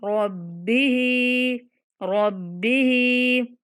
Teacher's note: यहाँ हा के नीचे ज़ेर है तो रब्बिही ऐसे नहीं पढ़ेंगे, हा को खींच के पढ़ेंगे।